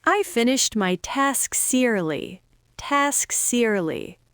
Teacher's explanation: deliberately take the final consonant of the cluster and attach it to the vowel of the next word